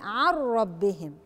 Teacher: عن ربهم إدغام بدون غنة، نون الساكنة وراها راء، الراء حرف من حروف الإدغام بدون غنة اللي هم اللام والراء، فهقول عن ربهم.